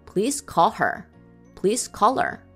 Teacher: is said please call her with H sound dropped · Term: Reduced forms